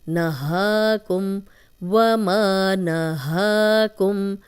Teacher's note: وما نہاکم، نہ نون کی زبر لمبی نہیں ہوگی، ہا پہ کھڑی زبر ہے، یہ 2 حرکات لمبا کریں گے